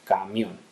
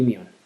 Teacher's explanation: Ese mión ha juntado a su vez las vocales I y O en un mismo golpe de voz. Eso es un diptongo.